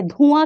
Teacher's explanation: इस चंद्रबिंदु के प्रयोग में नासिक से ध्वनि का उच्चारण तो है परंतु मुंह थोड़ा सा खुला जाता है